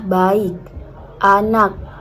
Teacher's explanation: K hambat diucapkan dengan hambatan pada pita suara tanpa letupan. Biasanya muncul di akhir kata.